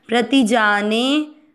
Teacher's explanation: जा और ने दोनों अक्षर दीर्घ बोले गए हैं